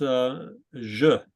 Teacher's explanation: And I can't think of an English word that uses a je like that, so I call it a buzzing Z, like a Z kind of morphing into a J.